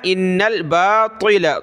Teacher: نون کو لام کے ساتھ ملایا